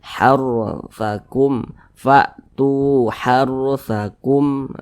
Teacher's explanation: Sebelumnya ada huruf yang memiliki tanda baca fathah, sama dengan yang di atas tadi. Maka ini huruf ro-nya ditebalkan, dibaca tabkhim, sehingga pangkalisan kita itu naik terangkat ke atas ketika kita mengucapkannya.